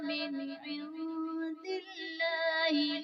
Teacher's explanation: یعنی نون ساکن میں ہم غنہ نہیں کریں گے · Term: اظہار